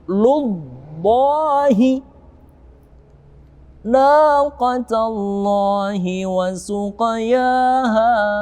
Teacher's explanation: Kemudian ada lu, lam dhammah bertemu dengan lamul jalalah atau Allah, maka wajib tebal